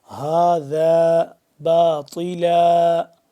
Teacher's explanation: ما خلقت هذا باطلا، هذا باطلا، ہا کھڑا زبر ہا، ذال الف زبر ذا، ذال کو نرمی سے پڑھیں گے، اور ہا یہ والا جو ہے سینے سے آخر والے حصے سے بالکل حلق کے بالکل آخری حصے سے جو سینے کے قریب ہے